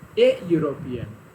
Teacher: here the letter E produces the sound U. So that is why we cannot place here an, we have to place A, because U sound is considered as consonant sound